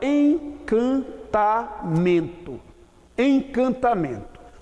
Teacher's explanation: vogal está sendo pronunciada com a ajuda do nariz. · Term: dígrafo vocálico